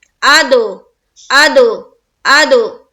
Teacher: دال حروف قلقلہ میں سے ہے، اسی لیے ہم یہاں پر کریں گے قلقلہ، یعنی کہ آواز کو ٹکرانا ہے